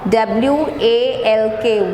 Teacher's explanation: The sound of L is not pronounced when you say walk. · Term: silent letter